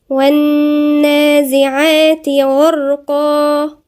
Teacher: حرف مشدد عند النون، وبعدين في ألف صغيرة مد طبيعي بمقدار حركتين، وبعدين في ألف تانية صغيرة بعد العين برضو مد طبيعي بمقدار حركتين.